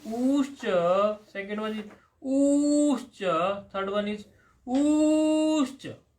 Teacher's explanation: a short u, then a long u, and further elongated u